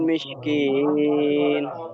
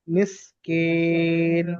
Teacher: ওটা শিন নয়, ওটা সিন আছে, ওটা আরো হালকা আওয়াজ হবে।